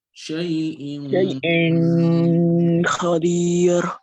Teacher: The ghunna is gonna be so solid for 2 count